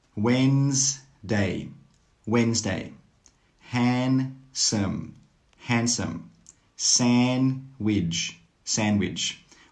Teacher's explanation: All of these words have a silent D. That means you don't need to pronounce the D sound.